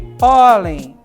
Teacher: Onde está a sílaba tônica? No pó, na palavra pólen. Perceba que ela terminou em N, certo?